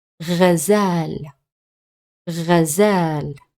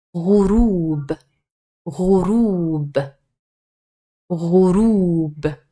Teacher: this letter, the Ghain, it's produced from the back of your mouth, and if you go back to our picture, you will find that the Gha or the Ghain is a little bit higher, than the Ain.